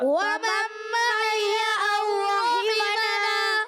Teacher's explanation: ومن میں غنہ پورا کریں گے